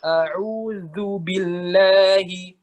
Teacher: Jadi pas dibaca cepat, a'udzu billahi. Nah gitu, bukan a'udzu awal ke akhir manyun terus bibirnya